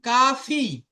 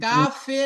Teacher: ফা জের ফি হবে ফা জের ফে হবে না